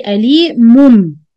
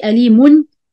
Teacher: If you tanween followed by ba, we change the noon sound into meme. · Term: iqlab